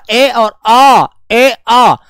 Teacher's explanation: वो कंठ से बाहर आती है आवाजें वो आवाज कंठ से निकलती है